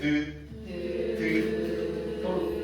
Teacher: 드트 같은 경우는 둘 다 치조 쪽에서 소리가 나는 소리예요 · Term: 치조음